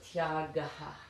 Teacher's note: it has a little aspiration at the end, as indicated there.